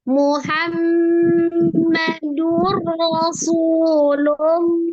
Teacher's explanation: Lullah, ada alif lam syamsiah kembali, dan khusus untuk di lafaz Allah berarti terikat alif lam jalalah, lafaz jalalah ya. Sebelum lam jalalahnya adalah harokatnya dhammah, maka dibaca juga dengan tebal ya.